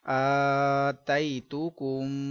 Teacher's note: میم ساکن کے بعد دوسری میم ہے ادغام شفوی کا قاعدہ گنہ کریں گے